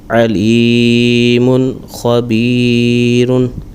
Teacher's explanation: تو یہاں پر اظہار کریں گے، غنہ نہیں کریں گے۔